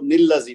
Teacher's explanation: تا کو ایک حرکت دیں گے زیر کی، اور اس کے بعد نون کے ساتھ لذی کو ملا دیں گے تو پھر وہ نل لذی بن جائے گا. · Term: نون قطنی